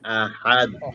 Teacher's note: আহাদে, আহাদ এবং শেষে কলকলা।